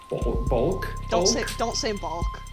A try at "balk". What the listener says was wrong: Don't say bulk. balk. balk. Like, do you say chalk? It is balk.